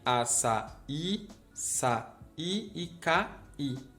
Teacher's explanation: Como esse I é a sílaba mais forte, fica fácil de identificar que é uma sílaba separada, que não é uma semivogal.